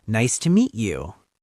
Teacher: Also, remember the intonation. Go up slightly on you. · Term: rising tone